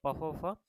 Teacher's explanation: प फ फ जो होते हैं आपका ओष्ठ से पढ़े जाते हैं।